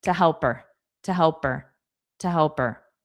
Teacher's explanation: two is going to be ta ta unstressed and fast